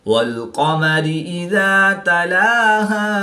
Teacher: الف سے پہلے ذال پر زبر ہے تو الف مدہ ایک الف یعنی 2 حرکات کے برابر کھینچ کر پڑھیں گے